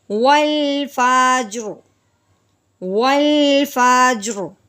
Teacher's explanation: پیچھے بھی ساکن ہے، پھر اس سے پیچھے دیکھیں گے تو اس سے پیچھے زبر ہے، اس لیے زبر ہونے کی وجہ سے اس را کو اب ہم پر پڑھیں گے